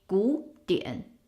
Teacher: when it's pronounced as one word, it will be 古典. Changing the first character third tone to a second tone.